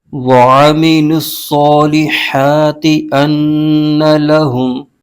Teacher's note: لام پر پیش ہے اور آگے صاد مشدد حرف ہے، تو صاد کو لام کے ساتھ ملا کر پڑھیں گے۔ صاد حروف مستعلیہ کا حرف ہے، اس کو پر یعنی موٹا کر کے پڑھنا ضروری ہے · میم کے نیچے زیر ہے، اس کو بھی بغیر کھینچے پڑھیں گے۔ لام پر پیش ہے اور آگے صاد مشدد حرف ہے، تو صاد کو لام کے ساتھ ملا کر پڑھیں گے